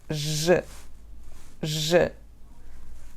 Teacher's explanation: Tocamos com a parte posterior da língua, o palato duro no céu da boca. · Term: som J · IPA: /ʒ/